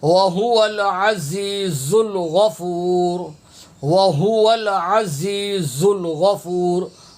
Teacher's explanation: ہا پیش ہو سینے سے ادا ہوتا ہے